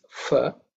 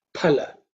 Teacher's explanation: But the accurate Sanskrit pronunciation is pa, aspirated pa, okay?